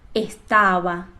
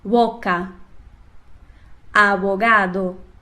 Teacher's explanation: a letra B geralmente é pronunciada com menor pressão labial, parecendo um intermédio entre o B e o V. Mas cada país tem o seu jeito de pronunciar, podendo ser mais puxado para esse jeito ou mais puxado para um B ou um V.